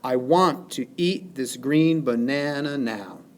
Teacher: For example, in this line, I want to eat this green banana now, we have 1, 2, 3, 4, 5, 6, 7, 8, 9, 10 syllables total. The pattern of stresses falls specifically unstressed, stressed, unstressed, stressed, unstressed, stressed, unstressed, stressed, unstressed, stressed. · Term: iamb